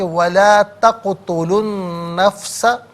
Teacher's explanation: لا تقتلوا میں لام پر پیش ہے، اس سے النفس کے نون کے ساتھ ملائیں گے، درمیان میں سے الف یعنی حمزہ کو حذف کیا جائے گا